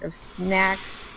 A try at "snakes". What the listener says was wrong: Snakes, not snacks, snakes.